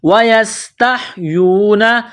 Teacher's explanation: سین میں سیٹی کی آواز پیدا کرنی ہے، سین کو پتلا کرنا ہے